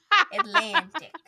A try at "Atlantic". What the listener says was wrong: No, you said Atlantic. You should put an extra C in there for no reason.